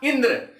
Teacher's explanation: इंद्र बोलते हैं तो सबसे ज्यादा जोर हम ई पर दे रहे हैं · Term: बलाघात